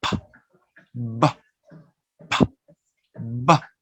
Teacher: The first two sound bilabial because we use both lips